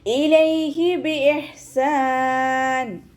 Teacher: ഹ തൊണ്ടയുടെ മധ്യഭാഗമാണ് മഖ്റജ് വരുന്നത്. സൗണ്ടിന് ഹ എന്നുള്ള അക്ഷരത്തിൻ്റെ സൗണ്ടായി പോവാതെ നോക്കുക കേട്ടോ.